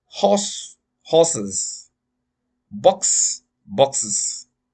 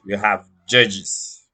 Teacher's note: The sound is pronounced is after base ending in sibilants.